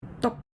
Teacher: It's pronounced short and with a middle level pitch, not high and not low. This tone appears in syllables ending in P, T, K, or H. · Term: fourth tone